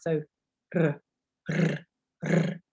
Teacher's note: So if you remember, you put your tongue at the front of your mouth behind your teeth and you roll your tongue. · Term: R sound